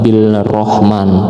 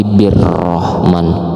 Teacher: idgham syamsiyah atau alif lam syamsiyah, jadi bacanya bukan bil rahman tapi birrahman